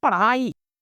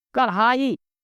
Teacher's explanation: वह जीहवा का अग्र भाग अर्थात नोक झटके के साथ नीचे गिरता है उछित व्यंजन के अंतर्गत आते हैं। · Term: उत्क्षिप्त व्यंजन